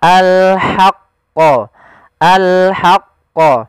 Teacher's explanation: dibaca wala talbisul haqqo tapi dia ha posisinya adalah kita bagaimana menyempurnakan huruf ha kecil yaitu kita mengeluarkan dari tengah tenggorokan kita ha disertai dengan nafas